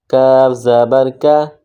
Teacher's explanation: چھوٹا قاف ہے، موٹا نہیں پڑھیں گے، باریک پڑھیں گے